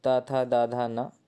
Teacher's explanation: ता, था, दा, धा, ना ये सभी दंत हैं